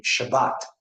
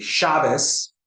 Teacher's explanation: The T sound that Sephardim say, for Ashkenazim, they say a Sa sound. So it will be Shabbos, while in Sephardic pronunciation, it will be Shabbat.